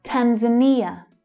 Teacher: So here we've got the third syllable is stressed. It's a short vowel sound, but it's the strongest.